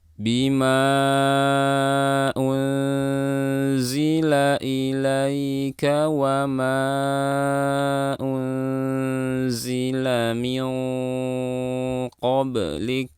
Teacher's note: Ini ikhfa. Dan posisikan lidah pada makhraj huruf qaf saat mendengungkan nun.